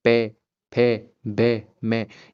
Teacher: आपके जो दोनों के दोनों होठ है वो आपस में प्रक्पन करेंगे। आपस में जो मेल करेंगे उसी के उन उन मेलों से ही आपका जो पै वर्ग होगा वो उच्चारित होगा।